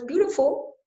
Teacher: the word beautiful would be loud soft soft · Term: syllable stress